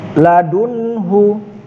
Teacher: Izhar halqi ialah nun sukun atau tanwin bertemu salah satu huruf hamzah ha, kha, ain, ghain, ha. Di sini nun sukun bertemu huruf ha, dibaca jelas, tidak dengung.